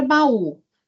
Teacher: O U aqui, se ele é sílaba tônica, ele é vogal. Então, eu tenho duas vogais que se separam. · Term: Hiato